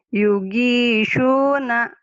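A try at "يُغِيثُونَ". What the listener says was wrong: Bukan, ujung lidah. Yugisuna.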